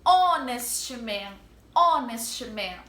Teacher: Esse O, ele apesar de começar com H, ele tem o som da vogal O. A gente pronuncia o O. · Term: H mudo